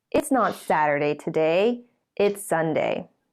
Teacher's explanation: the new information with the falling tone comes at the end of the sentence